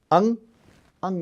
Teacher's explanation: मुख के पीछे नाक से भी ध्वनि निकालिए आप तो अनुनासिक ध्वनि हो गई।